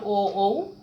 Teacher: তারপর ও কণ্ঠ, ওষ্ঠ, এগুলো কণ্ঠও লাগে আবার ঠোঁটও লাগে, সেজন্য কণ্ঠ ওষ্ঠ বর্ণ